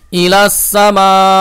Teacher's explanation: এটা হচ্ছে মাদ্দে মুত্তাসিল চার আলিফ টান দিবেন